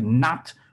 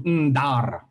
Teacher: Like final T has changed into final R, and nasal initials have become pre-nasalized stops. So just to give one example, a syllable like not would have changed into ndar, yeah? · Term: Northwest Middle Chinese